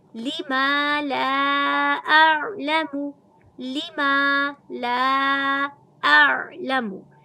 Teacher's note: लाम की ज़बर को भी अलिफ की मद के साथ करीबन 1.5 से 2.5 अलिफ की मिक़दार खींच के लंबा करेंगे, क्योंकि यहाँ पर ये छोटी मद भी है, लिहाजा 1.5 से 2.5 अलिफ तक आप इसको लंबा करके पढ़ सकते हैं।